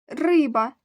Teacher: два склади наголос падає на перший склад